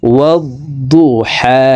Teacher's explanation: ওয়াদ্দু হার উপরে খারা জবর, তো এই হা হরফকে এক আলিফ টেনে পড়ব। ওয়াদ্দুহা ওয়াল্লাইলি إذا سجى والليل إذا سجى ما ودعك ربك وما قلى ما ودعك ربك وما قلى وللآخرة خير لك وللآخرة خير لك من الأولى وللآخرة خير لك من الأولى ولسوف يعطيك।